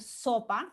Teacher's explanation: si ustedes hacen se detiene un momento a la hora de decir sopa verán que el ápice de la lengua y las encías de los dientes superiores se unen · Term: sonido de la s